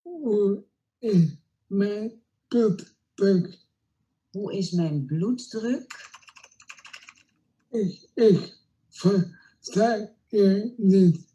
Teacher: the voice sounds really strained, it's tight and thick and slow in quality. You can hear that the voice is slow when she tries to articulate and phonate, and this is typically what a pseudobulbar dysarthria is going to sound like.